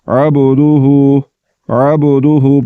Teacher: با کو پڑھتے ہوئے جھٹکے کے ساتھ پڑھیں گے ، جھٹکے کے ساتھ پڑھنے سے اس میں جو صفت کلکلہ